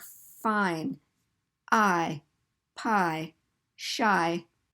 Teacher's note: of our vowel sounds in English are blended together so it's two sounds that become one but it's lengthened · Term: diphthongs